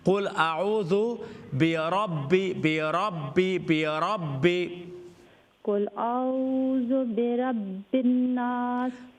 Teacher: را کے اوپر فتحہ ہے فل ماؤتھ